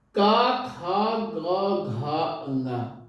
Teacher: का खा ग घा अंगा, आप सब बोलेंगे इसका वर्ग को तो का बोलेंगे, खा बोलेंगे, गा बोलेंगे, घा बोलेंगे, अंगा बोलेंगे, तो ये कहीं ना कहीं कंठ का इस्तेमाल होता है, आवाज कंठ से निकलती है